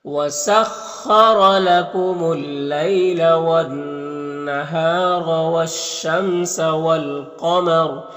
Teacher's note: والقمری میں الف لام حروف قمری قاف کے شروع میں تو لام کو پڑھیں گے، الف کو نہیں پڑھیں گے. قاف حروف مستعلیہ میں سے پر پڑھیں گے اور را کے اوپر وقف کریں گے تو را کو پر پڑھیں گے